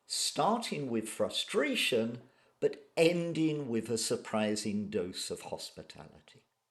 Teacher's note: a falling intonation indicates that I'm coming to the end of my sentence